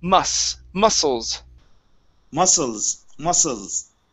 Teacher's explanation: it's only going to be a unvoiced s